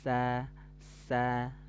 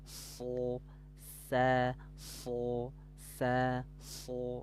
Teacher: kalau Sin itu harus tipis kalau Shad itu tebal · tempat keluar hurufnya sama-sama dari ujung lidah sejajar dengan gigi seri bawah